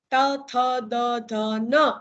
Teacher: જીભનો આગળનો ભાગ આ ઉપલા દાંતને જઈને સ્પર્શે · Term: દંત્ય વ્યંજન